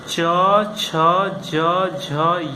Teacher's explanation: इनका उच्चारण तालव्य या तालु से होता है